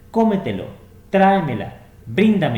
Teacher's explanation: tiene su acento un paso Más allá de la antepenúltima sílaba